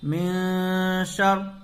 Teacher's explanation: غنہ ہوگا اس لیے کہ نون ساکن کے بعد حروف اخفا میں سے شین آ رہا ہے